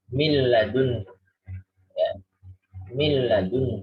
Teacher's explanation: Jadi contoh pertama itu nunnya tidak muncul, dia masuk ke lam langsung. Mil, bukan min. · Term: bila gunnah